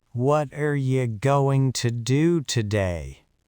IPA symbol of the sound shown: ə